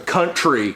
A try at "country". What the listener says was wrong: Well, all I said was country. I've always ever said a country.